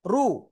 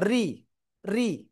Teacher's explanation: র অক্ষরের উপরে জবর বা পেশ হলে রটা মোটা করে মোটা আওয়াজে পড়তে হয়, আর র নিচে জের হলে চিকুন করে পড়তে হয়